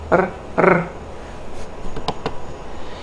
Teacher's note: for the retroflex we have the tip of the tongue curling back